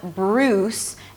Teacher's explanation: It's a B sound an R, round your lips for the R. It's not 'brrruws' but 'bruws'.